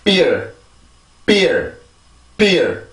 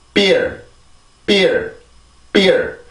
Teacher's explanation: B 발음은 양순 폐쇄음입니다. 양순 폐쇄음. 입술의 양입술, 밑입술, 아랫입술에 을 이용해서 공기를 막아주고 공기를 막았다가 그리고 열어주면서 그때 공기가 튀어나가게 돼요.